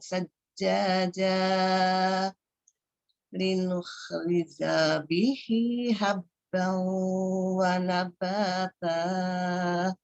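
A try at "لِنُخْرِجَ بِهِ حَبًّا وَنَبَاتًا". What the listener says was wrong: Sisa janya tadi. Bentar janya tidak panjang. Janya tadi dipanjangkan. Harusnya pendek saja satu ketukan.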